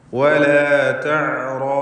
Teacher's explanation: റായിനും അതിൻ്റെ ദീർഘാക്ഷരമായ അലിഫിനും തഫ്ഖീം കൊടുക്കണം. തടിപ്പിച്ച് സ്വരഭാരത്തോടെ ഉച്ചരിക്കണം